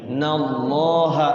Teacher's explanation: lafaz Allah dibaca tafkhim, tebal ya. Jangan dibaca nallaha.